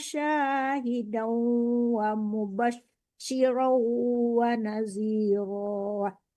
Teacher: ditarik ke hidung ya Bu, soalnya dengung, jangan sekadar tasdid, jangan hudau, tapi hudau ditarik ke hidung.